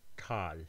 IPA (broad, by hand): taːl